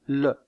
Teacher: la pointe de la langue est contre les alvéoles et l'air passe sur les côtés. Aussi appelle-t-on cette constrictive une constrictive alvéolaire latérale.